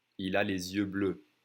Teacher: you see how I connect the S that's usually silent to the next vowel sound